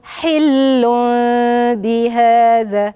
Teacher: اقلبت التنوين اللي هو النون الساكنه اللي في التنوين لميم، والميم وراها باء، يبقى اقلاب.